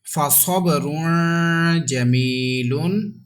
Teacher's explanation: Ba is kalkala with echo sound